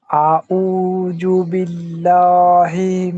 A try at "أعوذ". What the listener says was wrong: জালটা উচ্চারণ হলো না। আউযু, জু না, জু আপনি বলতেছেন আউযু, জু এটা ভুল। জু নরম, একদম নরম। আউযু, আমরা জাল যেভাবে উচ্চারণ করেছিলাম এইখানে ওইভাবেই উচ্চারণ করতে হবে।